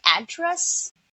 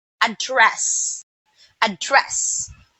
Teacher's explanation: So the on the second sentence, the second syllable was stressed. So that means it is a verb